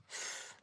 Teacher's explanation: There's that top teeth going over the bottom lip and blowing sound.